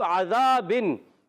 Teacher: हा और आइन हलक के दरमियान वाले हिस्से से अदा होते हैं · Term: उर्फ़े हल्की